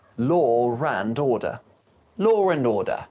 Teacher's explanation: Just remember the R sound is not very strong. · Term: intrusion